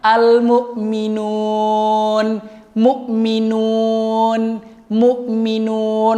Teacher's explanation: ketika nun berharokat dhammah ketemu dengan wawu dan menjadi panjang bacaan, itu bacaannya keluarnya langsung di rongga, langsung di al-jauf, dari rongga tenggorokan hingga ke rongga mulut.